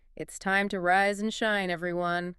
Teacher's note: Notice the diphthongs here. The gliding vowel sounds in rise and shine. Your mouth needs to physically open and close on both words. · Let's model that melodic upward inflection.